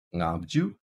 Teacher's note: Tibetan allows our ng sound, our ng sound, our velar nasal, at the beginning of a syllable